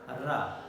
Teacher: Because during the production of ra, tip of the tongue goes to touch against the position just post the alveolar, teeth ridge. After the teeth ridge, that portion, the tongue goes to touch that portion. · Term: post-alveolar